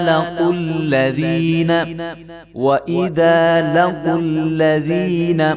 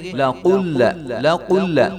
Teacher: قاف موٹے والی قاف ہے، اس کو بریک والی قاف نہیں پڑھیں گے